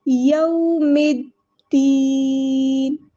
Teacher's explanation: یہاں پہ واو ساکن سے پہلے زبر ہے تو مد لین ہو رہی ہے، نرمی سے اس کو موڑنا ہے